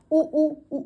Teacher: उ ऊ से हमारे होठ गोल-गोल की शेप में आ रहे हैं। तो होठों से।